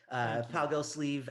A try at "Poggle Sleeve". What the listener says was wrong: You're still not saying it right, though. You're still not saying it right. Poggle Sleeve. It's a long E.